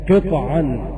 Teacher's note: بسكون الطاء مع القلقلة